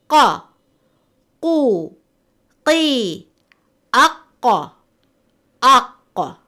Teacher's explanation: From the 18 letters, 2 letters come from the back of the tongue, أقصى اللسان, قاف and كاف. قاف is pronounced when the root of the tongue touches the soft part of the palate